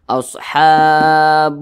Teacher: walaupun hukumnya berubah bacanya tetap sama didengungkan Jadi didengungkan dua harakat atau kira-kira dua ketukan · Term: gunah masyaddadah